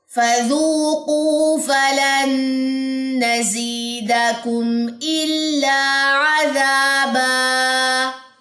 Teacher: یہاں پہ کم کے بعد آپ نے غنہ نہیں کرنا کیونکہ میم ساکن کے بعد حمزہ ہے, اظہار شفی ہے